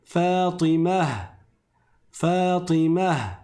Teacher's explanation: Je vais prononcer un scoun à la place de la dam. et je vais transformer le marbuta en ha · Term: ta marbouta